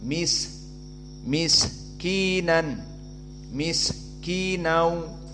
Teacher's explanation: Jika disukunkan maka dia hams maknanya jaran annafs ada nafas yang keluar